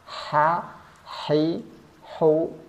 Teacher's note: H besar tenggorokan bawah kalau H kecil ini tenggorakan Tengah ha hi hu bah bah jangan ada serak-seraknya menjadi ha khi